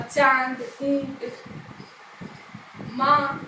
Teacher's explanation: कहाँ से होता है? मुख और नासिका दोनों से जो है स्वर निकलता है, ध्वनि निकलती है। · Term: अनुनासिक